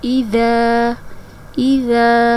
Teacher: اذا حمزہ زیر ای، ذال زبر الف ذا، اذا اذا ذال کو نرمی سے ادا کریں گے۔ ذال کو ادا کرتے وقت سیٹی کی آواز نہیں آنی چاہیے